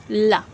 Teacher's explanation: आप देखोगे जब आप ला का उच्चारण करोगे तो आपकी जो जीभ है वो पूरी तरीके से फोल्ड हो रही है और जो हवा है वो इधर से अगल बगल से निकल रही है